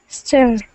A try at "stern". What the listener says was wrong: Okay, give me the N at the end of the word. Stern.